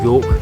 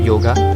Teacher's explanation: the sanskrit word of yoga is pronounced as yog instead of yoga